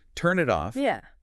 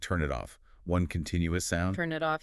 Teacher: It's like the consonant just reaches over to the next word's vowel